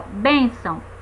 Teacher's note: A gente percebe que a sílaba tônica da palavra bênção é bem, primeira sílaba.